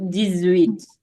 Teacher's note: you hear the Z between the D and the 8